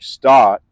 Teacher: you might hear something like start where the R gets dropped more